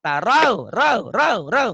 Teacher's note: Enggak ada yang panjang, itu huruf lin. Kayak huruf diptong.